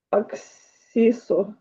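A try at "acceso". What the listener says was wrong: Е. Завжди е. І на і не перетворюється.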